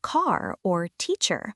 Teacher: In many American accents, the R is pronounced quite clearly at the end of words like car or teacher. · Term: the R sound